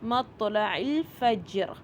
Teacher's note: مطلع میں دیکھیے تو جو ہے وہ ساکن ہے اور یہاں پہ کلکلہ کا رول آ رہا ہے